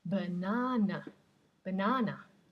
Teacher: the schwa, the unstressed vowel sound, which is the most common sound in English.